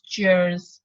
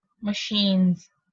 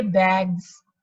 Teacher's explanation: The s will be pronounced phonetically as z.